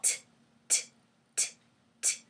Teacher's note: It's kind of hard to see, but behind my two teeth, my tongue, if this is the roof of my mouth, my tongue is tapping on the top of my mouth, right behind the front teeth. It's going t, t, t, right down to the bottom of the mouth.